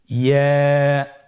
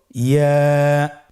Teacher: ইয়া হরফটি উচ্চারণের ক্ষেত্রে বারিক হবে এবং 1 আলিফ টেনে পড়তে হবে।